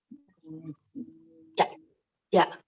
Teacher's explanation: ja itu kan dari tengah-tengah lidah ya, menekan langit ya